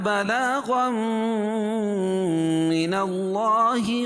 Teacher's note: الا بلاغا، غم، قاعدہ ہے کہ نون ساکن یا تنوین کے بعد ادغام مع الغنہ کے 4 حرفوں میں سے کوئی بھی حرف آئے تو یہاں تنوین کے بعد ادغام مع الغنہ کے 4 حرفوں میں سے میم آ رہی ہے، اس میں غنہ کر کے پڑھیں گے، ادغام مع الغنہ ہوگا، اور اللہ کے لام سے پہلے زبر ہے تو اللہ کا لام پور پڑھا جائے گا۔